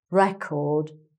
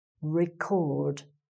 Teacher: with the change of stress, the vowel sound changes, too